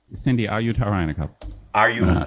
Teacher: I almost heard a linking R because you're an American you have a rotal r jumping in